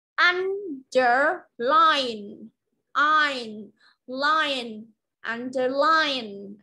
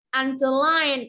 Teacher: Underline là rơi vào âm tiết thứ ba là trọng âm.